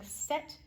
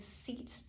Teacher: instead of saying set, she said seat with the long vowel sound